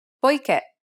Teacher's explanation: As indicated by the accent, the last syllable should be stressed.